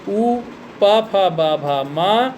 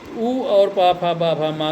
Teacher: उपध्यमानीयानाम ओष्ठौ, यानी उ, पा, फा, बा, भा, मा, इन वर्णों का उच्चारण करने में ओठ गोल गोल होकर के आगे की तरफ ऊपर नीचे की तरफ मुड़ता है, तब उ और पा, फा, बा, भा, मा का उच्चारण होता है।